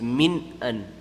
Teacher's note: Ithhar noon sakin, you don't make any ghunna, you make the noon very apparent.